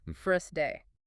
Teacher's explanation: The R in first hits a wall because of the S. The British speaker drops the R and simply elongates the preceding vowel to fill the rhythmic space.